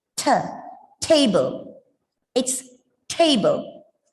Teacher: be touching just behind your upper teeth it is ta and for the letter ta it's a voiceless closing you feel the air